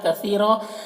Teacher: فن کے تنوین میں اخفا ہو رہا ہے، یہاں پر تنوین کی آواز کو ناک میں چھپا کر پڑھیں گے۔ کثیرا، سا کو باریک پڑھنا ہے، کاف کو بھی باریک پڑھنا ہے